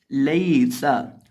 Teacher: हम सीन के अंदर सिटी की आवाज़ पैदा करेंगे।